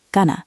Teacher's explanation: The NG sound changes to work better with the following N sound. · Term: assimilation